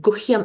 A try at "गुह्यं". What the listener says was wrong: Yes, so H has to be pronounced, okay? Guhyam.